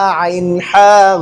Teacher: দেখেন আপনি আইন আর হা, হলকের মধ্যখান থেকে হইতেছে।